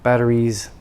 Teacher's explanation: Because battery, voiced vowel sound. Batteries, the S becomes voiced into a Z sound.